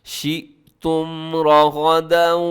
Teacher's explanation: حیث شئتم، اور آخر میں میم ساکن کا اظہار ہو رہا ہے، جسے اظہار شفوی کہا جاتا ہے، مطلب آپ نے تیزی سے پڑھنا ہے، غنہ نہیں کرنا، میم کو ہلانا نہیں ہے